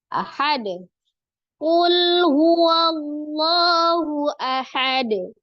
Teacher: tanwin ketika diwakafkan ya maka harakat dah tanwin akan menjadi sukun Dal ketika sukun baik sukun asli ataupun disukunkan maka berlaku hukum Qalqalah ya dipantulkan pada saat di akhir atau pada saat waqaf huruf dalnya qalqalahnya · Itu ada huruf lam sukun, hati-hati ya, tidak dipantulkan. Huruf lam memiliki sifat antara syiddah dan roghah. Ya, tengah-tengah, mengalir sebagian. Jadi lamnya dialirkan.